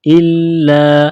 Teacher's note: लाम के ऊपर तजी है तो लाम को दबाना है